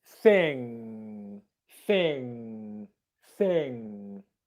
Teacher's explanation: the back of the tongue in here touches the back of the soft palate